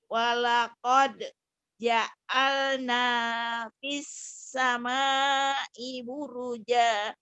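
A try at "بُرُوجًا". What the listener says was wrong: Buruja. Jadi mad iwad ya Bu, jadi panjang.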